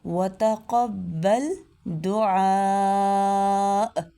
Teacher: عین کو اس کے مخرج سے ادا کرنا ہے، وسط حلق سے ، وتقبل دعاء، جھٹکے کے ساتھ وقف کرنا ہے، ربی اجعلنی